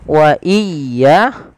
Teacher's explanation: biasanya memperpanjang pengucapan ya, iya, yang seharusnya tidak dilakukan, melainkan menekan ya